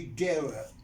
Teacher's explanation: Diphthong plus a schwa. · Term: vowel sequences